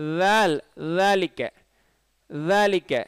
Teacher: நுனிநாக்கை நுனி மேல் பல் நுனியில் வைங்க. தால் நீங்கள் ஜால்னு சொன்னீங்கன்னு வச்சுக்கிறீங்களேன், ஜால் தப்பு.